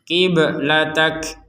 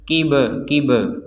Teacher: huruf ba maka huruf ba ini kita wajib memantul memantulkannya kib jadi pantulan dari huruf ba Jangan sampai keterlaluan sehingga terdengarnya adalah harakat berbunyi e enggak ada itu E itu jadi sekedar pantulan saja jangan sampai